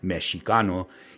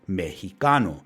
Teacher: the sh sound of the letter x transformed into an aspirated h sound